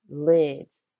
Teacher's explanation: when added with a consonant suffix s the s turns into the z sound as in the word lids you know those things you put